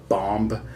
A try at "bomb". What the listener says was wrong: No, the B is silent. The final B is silent. It's bomb. The final B is silent! I don't want to hear Bomba!